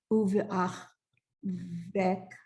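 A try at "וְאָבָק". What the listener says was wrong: wait, where are you getting v from?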